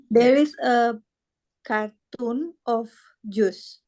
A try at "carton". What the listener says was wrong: Karton ya, bukan kartun. Kalau kartun itu film kartun. Kalau O-nya double itu baru dibaca kartun. Kalau O-nya 1 dibaca karton.